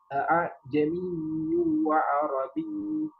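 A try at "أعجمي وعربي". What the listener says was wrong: Itu tanwin bertemu huruf waw. Belum dengung itu.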